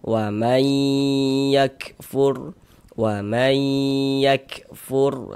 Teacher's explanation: Karena huruf nun sukun ini masuk melebur ke huruf ya. Kemudian di bagian mainnya itu suaranya itu kita tahan, kita panjangkan sejenak sepanjang dua harakat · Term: ghunah